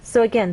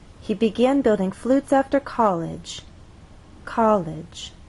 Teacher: With college, two syllables, our voice sort of steps down. College, from one level to the next, from a higher level to a lower level.